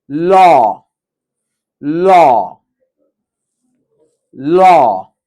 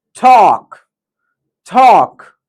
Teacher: Lips clearly rounded, jaw slightly open, tongue back mid, long and steady ah sound.